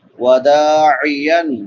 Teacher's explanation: دال کے بعد الف مدہ ہے، ایک الف کے برابر لمبا کریں گے، الف سے پہلے زبر ہے۔